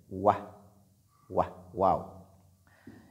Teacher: Et Waladdallin commence par Waw et cette lettre sort des deux lèvres. Waw. Et elle est lue de façon légère.